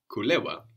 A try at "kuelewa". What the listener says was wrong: So you must be careful to pronounce that E of kuelewa, no?